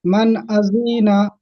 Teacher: নুন সাকিনের পরে হুরুফে হালকির 6টি অক্ষরের মধ্যে হামজা এসেছে, তাহলে নুন সাকিনের আওয়াজকে বিনা গুণায় জাহির করে তাড়াতাড়ি পড়তে হয়, একে ইজাহারে হালকি বলে।